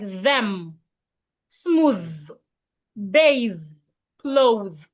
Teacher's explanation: Put your tongue in between your teeth and make vibration.